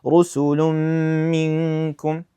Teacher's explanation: So we pronounce the two letters as one single mushaddad letter. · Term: idgham